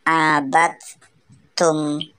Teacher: Pada ayat keempat dalam Quran surat Al-Kafirun terdapat idgham mutajannisain karena huruf dal sukun bertemu dengan huruf ta. Huruf dal dimasukkan ke huruf ta sehingga ta seolah-olah berharokat tasdid. Contoh membacanya adalah abadtum bukan abadtum.